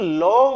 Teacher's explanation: দুদিক দিয়ে বাতাস বেরিয়ে যাচ্ছে বলে একে বলা হবে পার্সিক ধ্বনি। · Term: পার্শ্বিক ধ্বনি